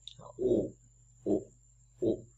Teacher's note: cái âm u là một âm tròn môi và khi ta đọc sẽ cảm giác như là môi ta chu lại giống như u nai đó.